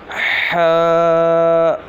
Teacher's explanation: ح جو ہے حلق کے درمیان والے حصے سے ادا ہوگا